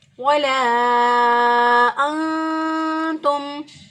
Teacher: اب یہاں پر دیکھیں نہ حروف حلقی نہ حروف یرملون میں سے کوئی حرف، نہ ہی با، لہٰذا ہم نے اخفا کیا، نون ساکن کی آواز کو چھپاتے ہوئے ادا کیا